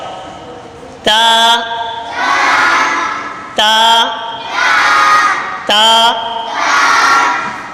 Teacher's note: یہ زبان کی نوک اور اوپر کے دانتوں کی جڑ سے ادا ہوتا ہے